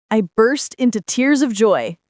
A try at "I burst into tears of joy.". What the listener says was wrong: notice the pronunciation of burst. The R sound is soft, not rolled. Try it again.